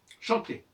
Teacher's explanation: dans chanter, le R de chanterai ne s'entend pas